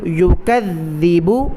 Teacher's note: ذال پر تشدید ہے، ذال کو سختی کے ساتھ ادا کرنا ہے، اور اسی طرح ذال پر زبان کی نوک باہر بھی نکالنی ہے۔